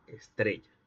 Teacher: en el paso de Stella a estrella se agregó un vibrante simple en el interior de la palabra. Quiere decir entonces que se agregó una consonante pentética. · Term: vibrante simple alveolar sonoro